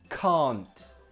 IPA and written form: kɑːnt (can't)